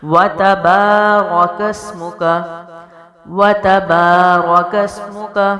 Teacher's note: آگے ہے واو ہونٹوں سے، تا باریک، با الف خالی سے پہلے زبر ہو تو الف مد ہے تو اس کو بھی لمبا کریں گے، را زبر ہے تو موٹا پڑھیں گے، کاف کو آگے سین سے ملائیں گے